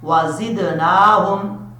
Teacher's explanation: بربہم وزدناہم، واؤ کو پڑھتے وقت ہون گول کریں گے، زا جو ہے حروف صفیرہ میں سے ہے، سیٹی کے ساتھ پڑھا جائے گا، دال میں قلقلہ ہے، دال جب ساکن ہو یعنی حروف قلقلہ تو تب قلقلہ کیا جاتا ہے، یہاں دال ساکن ہے۔